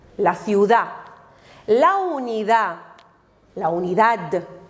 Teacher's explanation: pero la de no se pronuncia